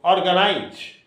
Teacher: the accent has been given on the first syllable